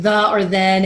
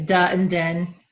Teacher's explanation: another normal one is changing th to D